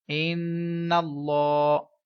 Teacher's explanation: نون مشدد ہے جس میں ہمیشہ غنہ کیا جاتا ہے، اور اللہ تعالیٰ کے لام سے پہلے والے حرف یعنی نون کے اوپر زبر ہے، تو یہ اللہ تعالیٰ کا لام پر پڑھا جائے گا۔